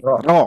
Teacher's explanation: tebal berikutnya yang mana lagi Da ro nah ini ro teal bunyinya tebal karena bunyinya sudah o Pak Bu vokalnya bukan a lagi